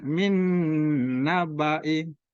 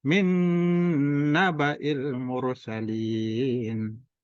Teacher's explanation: Nah, hurufnya idgham itu ada 4, ya, nun, mim, waw. Ya, nun bertemu nun termasuk idgham figunnah dan dibaca dengung.